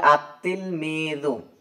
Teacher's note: লাম হরফটি উচ্চারিত হয় না, বরং লাম এর পরবর্তী হরফটি তাসদিদ যুক্ত রূপে উচ্চারিত হয় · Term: হরফুস শামসিয়া